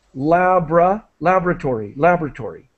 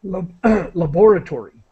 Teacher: I'm Canadian so I say laboratory so I do not pronounce this o syllable